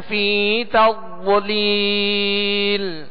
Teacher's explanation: ضاد کو پر پڑھیں گے، ضاد کو موٹا کر کے پڑھیں گے اور اس میں قلقلہ بھی نہ ہو اور یہ باریک بھی نہ پڑھا جائے.